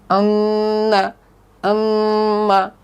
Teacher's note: গুন্নাটা মূলত নাকের বাসি থেকে উচ্চারিত হয়, গুন্নাটা নাকের বাসি থেকে উচ্চারিত হয়। 17 নম্বর মাখরাজ হলো গুন্না, এটা নাকের বাসি হতে উচ্চারিত হয়